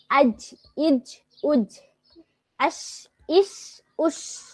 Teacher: জিহ্বার মধ্যখান তার বরাবর উপরে তালুর সঙ্গে লাগিয়ে উচ্চারিত হয় জিম শিন ইয়া